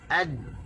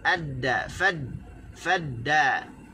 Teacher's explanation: sebab makhraj bagi huruf dal adalah hujung lidah dengan gusi